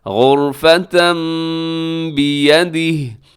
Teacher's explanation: یہاں تنوین کے بعد با ہے اور تنوین کو ہم نے میم کے ساتھ چینج کر دیا ہے تو اس کو کہا جاتا ہے اقلاب، غرفة بیدہ، اور آگے